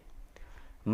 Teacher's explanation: म का उच्चारण स्थान ओष्ठ भी है और नासिका भी है